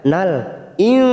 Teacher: nun sukun bertemu sin. Ikfa hakik kita samarkan 3 ketuk